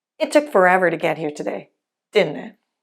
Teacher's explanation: the first T in “didn’t it” drops to sound like “didinit.”